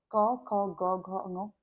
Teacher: ध्यान रखिएगा, इन सब का जो उच्चारण स्थान है, जैसे क वर्ग है, क वर्ग का उच्चारण स्थान कंठ है, यानी जो हमारे पास से हवा है, तो आप जब क बोलते हैं तो वो हमारे पास से गले से बाहर होके आती है